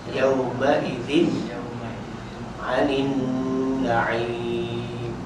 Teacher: Dengung hujung tu alif lam syamsiyah ma'al gunnah.